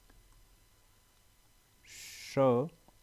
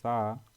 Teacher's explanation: उनके उच्चारण में वायु रगड़ खाती हुई बाहर निकलती है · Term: संघर्षी व्यंजन